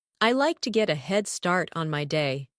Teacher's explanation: Stress the words head start